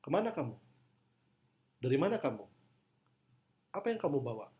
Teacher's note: di situ kita bisa merasakan stres pada kalimat tanya yang cenderung naik ke atas